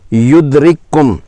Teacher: اس میں کاف ایک دفعہ پڑھا جائے گا جو بعد والا ہے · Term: ادغام